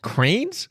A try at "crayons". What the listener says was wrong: Not cranes. You're missing a You're missing a vowel.